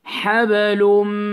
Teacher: So after the lam, you hold two counts nasal sound.